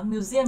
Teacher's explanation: nó sẽ nhấn vào âm thứ hai